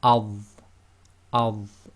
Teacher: So that's tafkhim. It's heavy, lifting the back of the tongue up, a bit more full mouth.